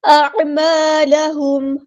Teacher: عین کو مستحل ہے کہ میڈل تھروٹ سے ادا کریں گے، حمزہ کی آواز واضح ادا کریں گے، الف مد آیا تو مد اصلی کریں گے.